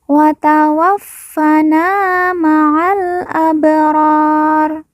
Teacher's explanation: ba sukun atau ba mati kita baca pantul karena merupakan huruf Qalqalah